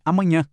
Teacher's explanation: O tio deixa o som mais nasal.